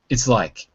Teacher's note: sometimes you won't hear the T in it's. I mean, it's there, and I say it, but some people might not say it because it's so fast.